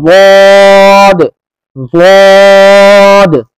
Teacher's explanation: जबान की करवट को लगाओ ऊपर की दाढ़ों की जड़ से, यानी सबसे पिछली जो जड़ है, जो सबसे पिछली जड़ है, सबसे ज्यादा अंदर की जड़ है, वहां पर जबान का किनारा लगेगा।